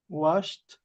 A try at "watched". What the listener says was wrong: Remember the T. Watched. Watched.